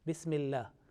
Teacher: this lam of Allah, in here Bismillah, because of a certain rule and condition, it will be pronounced with thin sound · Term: lamul jalala